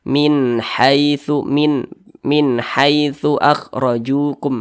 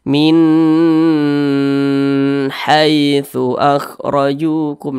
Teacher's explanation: Izhar itu dibaca jelas ya, tidak berdengung. Jadi dia dibaca pendek saja. Min haitsu akhrajukum, pendek, jangan dibaca seperti ini. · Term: izhar halqi